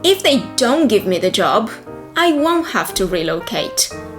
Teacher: in fast speech, when you pronounce the negative, usually you do not really hear the T.